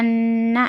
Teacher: اس میں نون میں گنہ کے ساتھ کرنا، گنہ پڑھنا، گنہ کے ساتھ